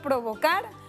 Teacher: tienen su sílaba tónica al final de la palabra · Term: palabras agudas